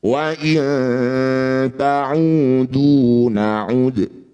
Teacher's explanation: Dal sukun di akhir bacaan disebut qalqalah kubro ya. Pantulannya, pantulan huruf dal ini betul-betul diperjelas.